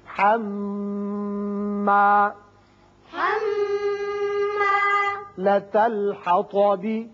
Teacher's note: میم مشدد ہے، غنہ کریں گے